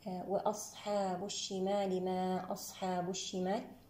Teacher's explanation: صفات الصاد رخوة مستعلية مهموسة مطبقة مسمطة